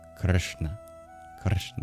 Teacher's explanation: We spell it Romanized Krishna, but there's actually no I. It's just an R. Goes straight from the K into the SH sound. But even the SH sound is different. · There is no I sound, or even a U sound that you might see transcribed in Gujarati · it's just a very unaspirated ka in Krishna. It's very soft in that sense. We spell it Romanized Krishna, but there's actually no I. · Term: vocalic R